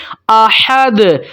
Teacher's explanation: اس کے بعد ہے احد، حا کی آواز کو آپ نے واضح کرنا ہے، ٹھیک ہے۔ حا حلق کے درمیان والے حصے سے نکلتی ہے